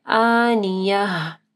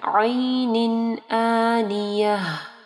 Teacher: یہ مد اصلی کی قسم آ رہی ہے، ٹھیک ہے، پہلے حمزہ ہے، اس کے بعد الف مدہ ہے، آنیہ، ٹھیک ہے، اور یہ گولتا جو ہے وقف کی صورت میں ہا ہو جائے گی۔